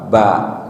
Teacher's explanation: Kalau B kan dua bibir tapi langsung kebuka